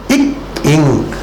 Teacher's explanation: அடிநாக்கு மேல்வாயினுடைய அடிப்பகுதியை பொருந்துவதனாலே இக் இங் என்பது பிறக்கும்